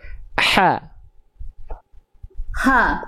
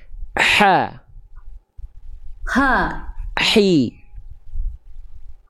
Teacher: hak kecil dilafalkan dari bagian tengah tenggorokan Bunda. Maka dia karakter nafasnya berbisik.